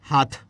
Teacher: হাতের তর জায়গায় আমরা উচ্চারণ করছি থ